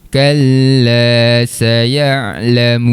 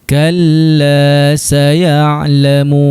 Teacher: Huruf terakhir sekarang ni adalah huruf nun. Hujung lidah akan sentuh pada langit.